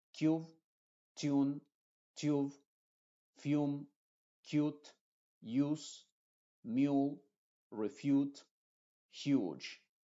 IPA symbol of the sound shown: juː